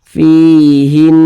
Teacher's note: Digunnahkan, suaranya itu kita tahan, kita panjangkan sejenak. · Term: gunnah musyaddadah